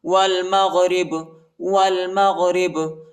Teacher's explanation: با کو جھٹکے کے ساتھ پڑھیں گے، قلقلہ کریں گے